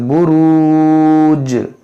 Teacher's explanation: जीम जब साकिन होगा तो ये हुर्फ़ क़लक़ला है, इसमें क़लक़ला भी होगा